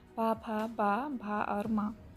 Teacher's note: ओष्ठ से देखिए निकलने वाले आपके वर्ड हैं